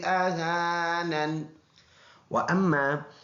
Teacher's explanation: میم کے ساتھ بوجہ شد ملائیں گے، میم جماؤں کے ساتھ اس میں غنہ کریں گے